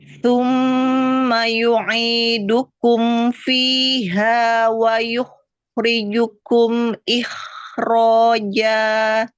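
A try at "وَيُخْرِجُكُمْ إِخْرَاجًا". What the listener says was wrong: Kenapa kho yang kedua lebih bagus daripada kho yang pertama? Kho pertama nggak kedengeran. Alirkan ke depan. Dorong ke depan suaranya. Wa yukhri. Wa yukhrijukum ikhraja.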